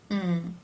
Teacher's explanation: the M consonant sound where the lips come together